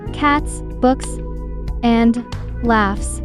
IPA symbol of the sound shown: s